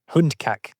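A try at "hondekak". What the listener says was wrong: It's not hund, it's hond.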